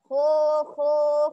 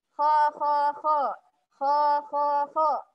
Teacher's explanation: Beda suara yang pangkal lidah naik dengan pangkal yang lidahnya turun